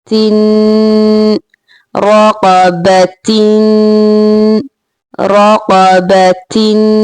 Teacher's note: So ta, 2 kasratin. Again taking the sound in your nose, a bit nasal sound